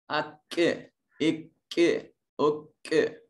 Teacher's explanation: کاف یہ منہ کے قریب سے ادا ہوتا ہے، یعنی ہم نے اپنے لپس کی طرف واپس پلٹ کر آنا ہے۔